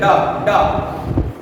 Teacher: ऊपर छू के स्पर्श करके जीभ ताल को और सीधे नीचे आ जाती है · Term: द्विगुण व्यंजन